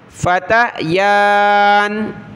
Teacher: وَدَخَلَ مَعَ، میم زبر ما، عین زبر ع، مع، ہا کو سین کے ساتھ ملایا، سین کو جیم کے ساتھ، السِّجْنَ، السِّجْنَ فَتَيَانِ، یا کے اوپر کھڑا زبر ہے، ایک الف کی مقدار میں اس کو اوپر کی طرف ہم کھینچیں گے، فتیان۔ قال احدہما انی ارانی، حمزہ زبر آ، را کھڑا زبر را، اس کے بعد نون یا مد زیر نی ہے، یہ کوئی حرف نہیں ہے، ٹھیک ہے۔